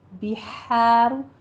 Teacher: ہا وسط حلق سے ادا کیجیے، باریک آواز کے ساتھ